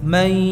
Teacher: Rasakan ada suara yang keluar dari rongga hidung atau khayshum. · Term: dengungkan